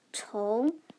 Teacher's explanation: So this is pronounced as ong. This is rising tone, the second tone.